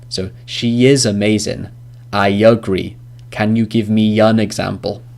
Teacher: a y sound in between the words which end in a vowel and start with a vowel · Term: linking y sound